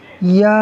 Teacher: یا کے اوپر جو کھڑا زبر ہے وہ یا مدہ کے قائم مقام ہے، تو یا کو ہم کھینچیں گے ایک الف یعنی 2 حرکات کے برابر